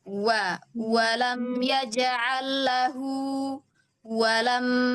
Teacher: Ambilan makhrajnya jangan hanya menyambar. Wa ya mulainya dari bibir yang dimonyongkan. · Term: huruf wau